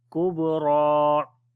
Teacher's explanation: On the ba we make qalqala, ra we read in heavy sound